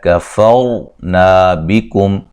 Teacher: را کو موٹا ادا کریں گے، را ساکن سے پہلے زبر ہے، نا الف مدہ ہے، یہاں بکم میم ساکن کا اظہار ہے۔